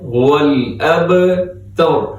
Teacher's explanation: را آخر میں موٹا پڑھنا ہے